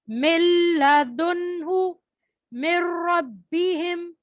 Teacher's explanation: من نہیں کرنا ہم نے, میم کو لام سے ملانا ہے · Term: بغیر غننے کے ادغام